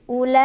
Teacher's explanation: La ini adalah mad wajib muttasil karena ada mad tabi'i bertemu hamzah dalam satu kalimah.